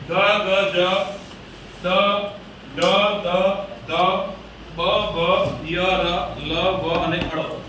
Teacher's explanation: ગળાના ભાગમાં આવેલા નાદતંત્રી કંપે ને જે રણકા જેવો ધ્વનિ ઉત્પન્ન થાય રણકે ના આપણે રણકાનો અવાજ આવતો હોય તે ધ્વનિ એટલે અવાજ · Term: ઘોષ ધ્વનિ